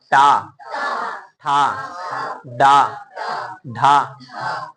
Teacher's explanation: देखिए टा ठा जब बोल रहे हैं टा, ठा, बोल के देखिए, बोल के टा, ठा, डा, ढा। ऐसा लग रहा है कि जवान ऊपर जाके गोल हो रहा है, मुड़ रहा है। देखिए आप कोशिश कीजिए कि जवान को ना मोड़े, जैसे चा छा बोल रहे थे वैसे बोले का कोशिश करें।